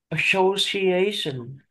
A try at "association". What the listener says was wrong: Đúng rồi.